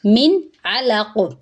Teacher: جب نون ساکن کے بعد عین آ جائے یا حروف حلقی میں سے کوئی حرف آ جائے، ہمیں پتہ ہونا چاہیے کہ حروف حلقی کون سے ہیں، تو ہم وہاں پہ نون کی آواز کو ظاہر کریں گے یعنی اظہار کریں گے۔ من علق، عین جو ہے وہ حلق سے ادا ہوگا، لام باریک ہے، قاف پر ہے، اس کا خیال رکھنا ہے۔